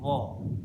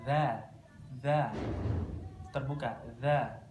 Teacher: Kalau dza kan dza terbuka, dza. Kalau wo ini lidahnya tetap menutup, wo, berbeda dengan dza.